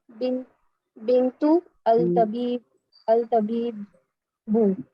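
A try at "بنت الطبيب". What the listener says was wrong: बिंतु तबीबी मिलाना है ना, अलिफ लाम आ जाए तो मिला के पढ़ना होता है। तबीबी। नहीं आप जब उसको मिला रहे हैं ना तो फिर अल पढ़ने की जरूरत नहीं है, आप इस ता को उसके साथ जाके मिलाएंगे तो इनके साथ।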